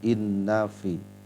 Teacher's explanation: Di situ ada nun tasydid atau syiddah, kita baca dengan digunnahkan di inna dengan dengung ya pada bunyi huruf nunnya